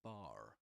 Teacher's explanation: He does pronounce the final ra at the end of the word bar.